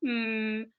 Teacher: if you close your mouth and you go um all of the air comes out your nose if you say n or ng those two sounds also all